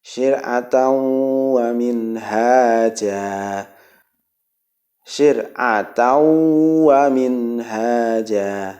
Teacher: Tanwin bertemu dengan wawu, hukum bacaannya ilgham bi gunnah.